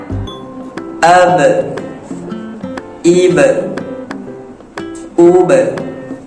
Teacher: Cara sebut huruf ba iaitu bibir bawah bertemu dengan bibir atas a menggunakan kedua-dua bibir